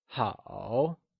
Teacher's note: good translates to ha and it is also pronounced using a falling rising tone